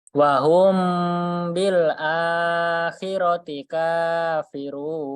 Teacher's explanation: Itu A-nya dibaca panjang 2 harokat.